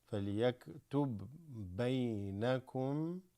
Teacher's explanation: we have a ba with a sukoon followed by another ba. This becomes like a shadda.